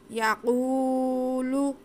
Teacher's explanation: واو ساکن سے پہلے پیش ہے، واو مدہ ہے، اسے ہم کھینچ کے پڑھیں گے۔